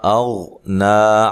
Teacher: غین کو موٹا پڑھنا ہے لیکن ہلانا نہیں ہے، نا مد اصلی ہے.